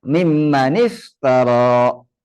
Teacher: caranya memberikan harakat kasrah pada kata akhir kata yang pertama. Berarti mimman menjadi mimmani.